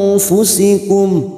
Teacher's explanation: Nun sukun bertemu fa ikfa hakiki. Kita samarkan bunyi nun sukun dan mendengung selama 2 atau 3 harokat